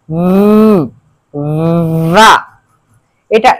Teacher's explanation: আমরা এটাকে ঠিক সেইভাবে উচ্চারণ করব ফা, এবং যখন আমরা ভা উচ্চারণ করব উপরের দুই দাঁত নিচের ঠোঁটের সাথে লাগবে এবং লেগে একটু ভাইব্রেশন হবে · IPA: /v/